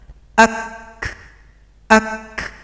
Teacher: ada bunyi k dia tertahan dulu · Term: Hamas